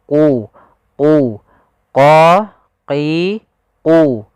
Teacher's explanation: Huruf qaf pangkal lidah kita harus kita angkat sehingga dia makhraj daripada huruf qaf itu pangkal lidah dengan langit-langit atas, maka dia menempel.